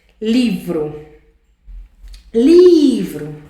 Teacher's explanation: Livro. Olha o I, o LI sendo a sílaba mais forte e sendo a penúltima